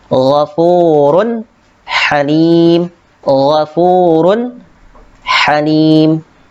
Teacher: Baik, untuk selanjutnya, kemudian di sini ada yaitu tanwin bertemu dengan huruf ha, ya. Ghafurun dibaca jelas, tidak dibaca ghafurun, tetapi ghafurun halim, ghafurun halim.